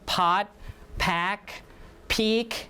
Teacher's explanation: the phoneme P becomes aspirated P when it occurs in front of the word